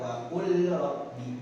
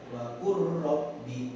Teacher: Karena tempat keluar hurufnya atau makhraj hurufnya itu hampir sama, ya. Jadi bukan bacanya wa qul rabbi, bukan, tapi dimasukkan wa qur rabbi · jadi dimasukkan huruf lamnya ke huruf ro-nya. Kenapa?